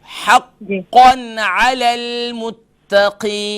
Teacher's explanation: हक़्क़न अलल मुत्तक़ीन। मुत्तक़ी, ता क्लियर होनी चाहिए, क़ाफ को भी मोटा करें